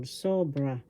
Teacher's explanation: The accent is in the first syllable, sobra.